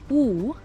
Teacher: when I say U, my lips are pursed and my tongue is up.